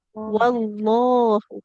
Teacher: Jadi setelah wawunya langsung lam tebal, bukan ke wawu lagi. Tidak wawullah, tapi waw.